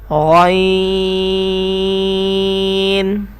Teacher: یہ بھی حروف مستعلیہ ہے اور خا کی طرح یہ بھی پڑھ پڑا جائے گا اور حلق کے اوپر والے حصے سے ادا ہوگا